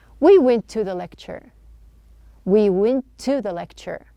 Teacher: True T, the schwa sound, we are not pronouncing two T's.